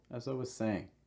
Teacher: the heavy stress will be on saying